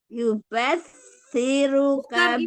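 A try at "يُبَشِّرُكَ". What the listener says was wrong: Bukan ujung lidah. Pakai tengah lidah. Yubashiruka. Ini shin, iya.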